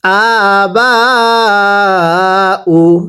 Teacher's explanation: এরপরে হামজা খারা জবর আ, বা আলিফ জবর বা, বায়ের মধ্যে 4 আলিফ টানতে হবে